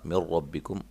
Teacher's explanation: نون ساکن کا ادغام بلا غنہ